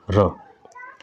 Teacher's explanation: प्रकंपित या फिर लुंठित जो ध्वनि होती है वो आर होती है, र